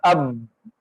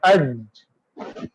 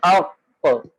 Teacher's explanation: جیسے ہی ہم نے با پڑھا اب ایک دم سانس بھی بند ہو گیا اور آواز میں ایک قسم کی بلندی ہے، اتار نہیں ہے بلکہ چڑھاؤ ہے آواز کے اندر · جیسے مثال کے طور پہ با ہے، اب با حمزہ با زبر، اب ایک دم آواز میں سختی ہے اور سانس جاری نہیں ہو رہا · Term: صفت جہر